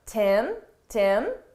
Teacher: we frequently get rid of the H on him and her at a natural pace and we connect it to the word before. So it really sounds like im, and then you hear the t from to.